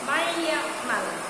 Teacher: Nah, di situ ada nun sukun bertemu dengan huruf ya, maka nun sukunnya itu dimasukkan